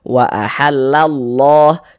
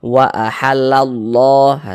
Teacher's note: ada harakat fathah nih haah maka lafaz Allahnya dibaca tebal dibaca tkhim sehingga dibaca WA ahallallah Jangan dibaca WA ahallalla jangan